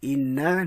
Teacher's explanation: nun bertasydid, nun bersabdu, kita kena dengung sekadar 2 harakat